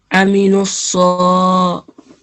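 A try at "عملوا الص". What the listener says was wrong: But right now, it's sounding like you're saying an alif, the sound of alif. Okay. So the sound of ayn is different to the sound of alif. So we have to really distinguish the sounds between alif and ayn. Amilu salihati.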